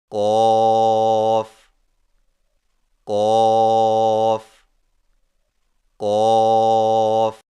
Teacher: قوف کی ادائیگی میں زبان کی جڑ کو کوے کے متصل تالو پر لگا کر موٹی آواز میں پڑھیں